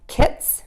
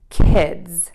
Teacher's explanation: all that you're going to do is turn your voice on for that D and Z sound. The tongue is going to do exactly the same thing.